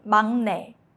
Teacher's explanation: Even though it's spelled 막내, Koreans say 막내. Because your mouth naturally shifts into a nasal sound, so 기역 softens to 이응.